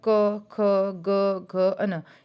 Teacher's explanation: क वर्ग की बात करें जिसमें आता है क, ख, ग, घ, न, ये हमारे बोले जाते हैं कंठ से।